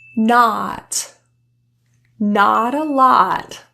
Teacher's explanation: the tongue is very low and back in the mouth the lips are open wide there's no tenseness in the lip position it's very relaxed let's